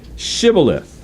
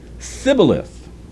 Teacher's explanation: the Ephraimites, for whatever reason, they couldn't do that SH sound